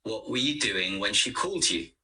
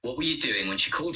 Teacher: what doing and called are stressed were and you are weak the u on the end is not stressed but not weak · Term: stress and weak forms